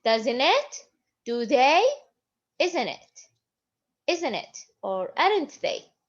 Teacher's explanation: This is the falling and rising. If I raised my voice or the speaker raised his voice, it means that I'm not sure about the statement before. I'm not sure if this statement is true or not. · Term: rising intonation